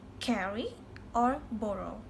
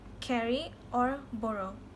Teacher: R between two vowels can be realized in two ways, and normally we use alveolar approximant